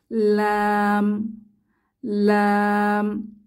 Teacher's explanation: জিহবার আগা উপরের তালুর সাথে লাগিয়ে লাম উচ্চারিত হয় · আমাদের জিহবাটা নৌকার মতো বেঁকে যাবে এবং জিহবার আগার উল্টা পিঠটা উপরের তালু অর্থাৎ অগ্রতালুকে স্পর্শ করবে · লাম উচ্চারণের জন্য জিহবার আগা উপরের তালুকে স্পর্শ করে এবং দুই ঠোঁট এক হয়ে যাবে লাম লাম আমরা বলতে পারি জিহবার আগা উপরের তালুর সাথে লাগিয়ে